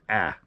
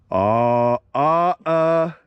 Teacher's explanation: slightly alter the alpha so it's pronounced a little bit more nasal